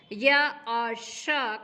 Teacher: य और श का उच्चारण करके देखिए, इनके भी उच्चारण में हमारी जिह्वा तालु का संस्पर्श करती है